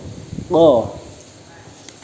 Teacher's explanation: Makharijul hurufnya pangkal lidah mengenai langit-langit atas lunak